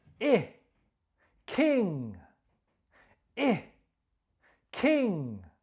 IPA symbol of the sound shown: ɪ